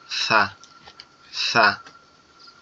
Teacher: সা অক্ষরটি হচ্ছে আমাদের জিহ্বার আগা সামনের দুই দাঁতের আগার সঙ্গে লাগবে, লেগে উচ্চারিত হবে সা, সা।